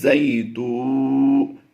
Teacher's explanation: تا واو پیش تو میں ہم نے تھوڑا لمبا کر کے پڑھنا ہے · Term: واو مدہ